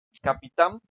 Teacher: Entonces, por ejemplo, la palabra que dijimos, capitán, habíamos dicho que capitán, su sílaba tónica es la tam, ¿no? O sea que es la última. Entonces es aguda.